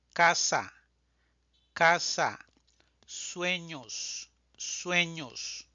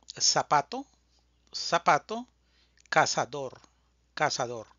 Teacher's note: Este es un español de latinoamérica es bastante similar el sonido de la s y de la z creo que no hay mucha diferencia o realmente no existe diferencia